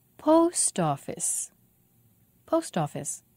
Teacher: post office three syllables the stress is on post